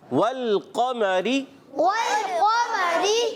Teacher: قاف کو پر رکھیں گے. را کو باریک رکھیں گے. زیر آنے کی وجہ سے را باریک ہو جائے گا · واو کی ادائیگی ہونٹوں کی گولائی سے. لام ہلنا نہیں چاہیے. ول نہ ہو جائے